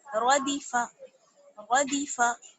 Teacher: را کو موٹا، دال کو باریک اور فا کو بھی باریک، را جو ہے وہ موٹا پڑا جائے گا اس میں کیونکہ را پر زبر ہے، ردیفا، ردیفا۔